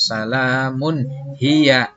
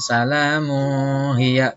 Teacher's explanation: nun mati ketemu hamzah, ketemu alif, itu bacaannya tidak disamarkan tapi jelas.